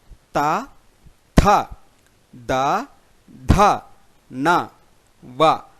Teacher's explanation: దంతముల సహాయంతో పలకబడుతూ ఉంటాయి కాబట్టి వీటిని దంత్యములు అని అందురు